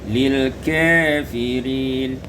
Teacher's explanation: imalatu fathatil kaf wal waw, diimalakan fathah kaf dan waw menjadi lil kafirin